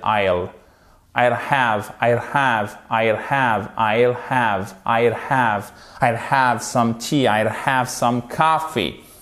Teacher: Vous faites rouler en fait quasiment le L.